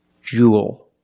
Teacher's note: this word Jewel it's pronounced the same as cool and pool you have the long u sound plus the dark L there's no extra vowel it's not Jewell it's Jewel like pool and cool make the